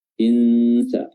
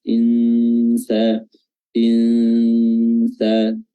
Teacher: cara menyamarkan huruf nun adalah dengan meletakkan makhraj huruf setelahnya, ya, yaitu huruf sin, ya, makhraj huruf sin ujung lidah ya bertemu dengan ujung gigi seri atas dan bawah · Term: ikhfa samar-samar